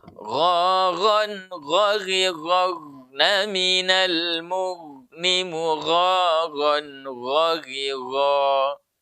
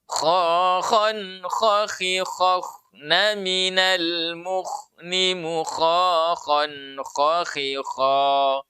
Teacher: Dan orang Arab membaca huruf gha dengan huruf kha dengan tebal. Jadi terangkat pangkal lidahnya ketika membaca huruf ghain dengan huruf kha. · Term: sifat isti'la